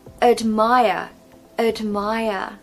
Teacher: we haven't got a strong vowel sound in that first syllable because the second syllable is stressed